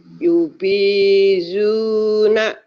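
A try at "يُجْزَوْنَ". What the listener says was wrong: ini Bu guru, ini jim bukan Mbak. Ini ya memang penulisannya numpuk.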